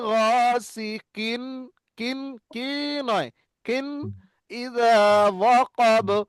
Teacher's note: তানবিন নুন সাকিনের আওয়াজটা একদম প্রকাশ করে বিনা গুন্নায় যাব। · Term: ইজহার